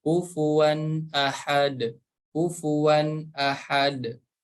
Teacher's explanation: huruf dal yang berharokat sukun harus dipantulkan.